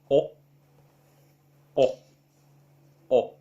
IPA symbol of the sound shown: ɒ